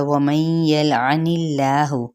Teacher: ومن یلعن اللہ، یہاں پہ ادغام مع الغنہ کا قاعدہ ہے، لام کو ہلائیں گے نہیں، اس میں جلالہ باریک پڑا جائے گا، یعنی اس کا لام